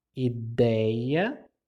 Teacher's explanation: E em ideia, eu tenho um ditongo aberto, porque é um som forte.